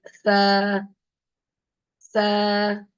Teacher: outside touching the upper tooth the upper tooth the S okay the tip of the tongue will be touching the upper tooth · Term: letter s